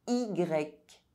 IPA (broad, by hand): i.grεk